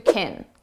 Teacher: When can is the auxiliary verb, so it's not the main verb, we reduce this to kin. And it's very unstressed sound.